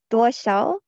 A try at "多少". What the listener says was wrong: Do you see the SH again? You do not have enough air. Duo shao.